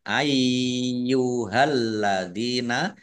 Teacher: lamnya dibaca dobel ada tasdidnya